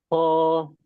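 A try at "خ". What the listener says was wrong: Ada sedikit kotornya ya. Ada kayak ngoroknya sedikit. Nah, di situ masuk ke lidah. Dari pangkal lidah.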